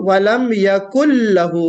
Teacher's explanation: यकुन, आमतौर पे यहाँ नून लोग पढ़ देते हैं यकुन लहू, यहाँ पे यकुन नून साइलेंट है, बल्कि ये नून जो है मर्ज हो जाएगा, किसमें, लाम में मर्ज हो जाएगा। मर्ज को हम कहते हैं इदगाम।